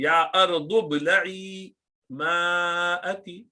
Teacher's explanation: تو حمزۃ الوصل ہے تو ضاد کے ساتھ ڈائریکٹ با کو ملا دی